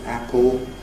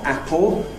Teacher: Notice it isn’t any more [ˈæpɫ] as in RP, but [ˈæpo]. The tongue tip doesn’t touch